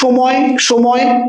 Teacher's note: আমরা যদি উচ্চারণ করি সময় সময়, তখন জিভটা কিন্তু দাঁতে লাগছে না।